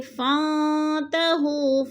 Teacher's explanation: فانتہوا فن پہ اکفا ہے، نون ساکن کے بعد تا حروف اکفا میں سے ہے تو ادھر اکفا کریں گے، آواز کو ناک میں چھپا کر پڑھیں گے